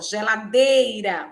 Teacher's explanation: As palavras que têm a penúltima sílaba tônica são paroxítonas, ó, geladeira, o D é mais forte, e é a penúltima sílaba, né? É paroxítona.